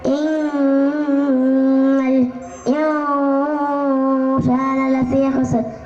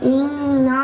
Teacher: நூலுக்கு ஷத்து வந்ததாலே அதை குன்னா செய்துதான் ஓத வேண்டும். எனவே இந்த வார்த்தையை இன்னா என்று மூக்கால் மறைத்து ஓத வேண்டும்.